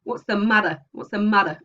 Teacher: it's not a d because it's not an alveolar stop it's a hitting the mouth and then it bounces off again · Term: taps and flaps